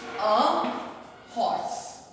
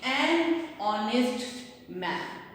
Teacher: h की sound नहीं आ रही है, बल्कि h साइलेंट है